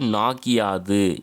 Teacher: நாகு plus யாது நாகியாது, உகரம் இகரமாக வந்து மாறுது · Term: குற்றியல் லிகரம்